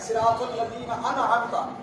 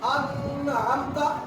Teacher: اب ہم نون کو صرف ظاہر کریں گے اور غنہ نہیں کریں گے. ظاہر کرنے کا مطلب یہ ہے کہ نون کو صرف مخرج سے ادا کریں گے. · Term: اظہار